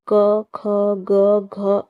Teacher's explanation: And answer is D, कंठ। क वर्ग का उच्चारण स्थान कंठ होता है